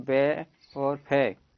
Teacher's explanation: दंतोष्ठ, दंत दांत और ओष्ठ के आधार पर